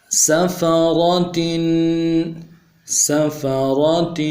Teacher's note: تنوین ہے، غنّے کریں گے، غنّے کو ایک الف کی مقدار میں کھینچیں گے